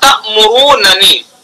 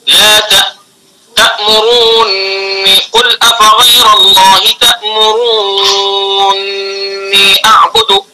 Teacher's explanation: پہلے نون کا دوسرے نون میں ادغام کیا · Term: ادغام کبیر